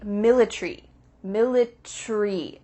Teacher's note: in british english they often cut out the a so instead of military it would be military military that a